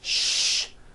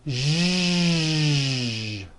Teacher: To produce this sound, first make a sh sound, and then you add voicing. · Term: voiced SH sound